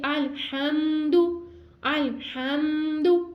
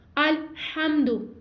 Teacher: अगर हम इसको ऐसे पढ़ेंगे अलहम्दु अलहम्दु तो ये गलत अदायगी होगी, हमने इसकी गलत अदायगी नहीं करनी, हमने हा को ठंडी सांस के साथ अदा करना और यहाँ पे गुन्ना नहीं करना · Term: इजहार शफी